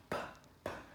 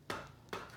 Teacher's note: Âm P mình sẽ bật hơi nào.